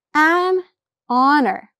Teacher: the H in honor and our is silent, so it starts with the vowel sound